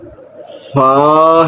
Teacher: یہ نیچے کا جو ہونٹ اس کا تر حصہ اور اوپر کے جو دانت ہے اس کے جو کنارے ہیں وہاں سے یہ لفظ فا ادا ہوگا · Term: حروف شفویہ